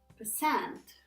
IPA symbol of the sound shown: ɜː